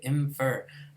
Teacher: I'm pronouncing this labial dentally so this alveolar phoneme takes on an a labia dental shape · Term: labia dental nasal